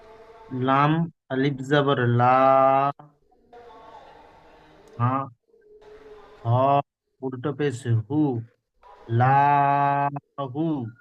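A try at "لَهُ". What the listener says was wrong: আপনি কি বললাম, আলিফ জাবার এখানে কোথায় আছে, আলিফ এখানে নেই, লামটাও টান হ্যাঁ,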